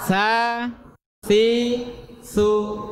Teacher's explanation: sekarang ujung lidah nempel ujung gigi atas